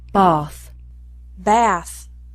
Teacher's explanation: the sound of the letter A is also different in some words where the British pronounce it are and the Americans pronounce it ah